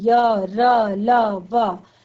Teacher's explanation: अर्थात जो हमारी आवाज आती है वो बिल्कुल एकदम गले से आती है। तो इस मुख जो जीवा होती है वो इनको बोलते वक्त मुख के किसी भी भाग को नहीं छूती। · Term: अंतस्थ व्यंजन